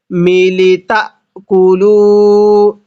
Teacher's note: মিলি লামের মধ্যে টান হবে না।